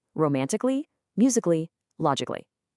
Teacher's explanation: I'm just hopping right over that A. It's the same thing for musically and logically.